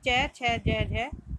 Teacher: ये हमारी तालव्य ध्वनियाँ हैं